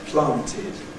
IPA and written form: ˈplɑːntɪd (planted)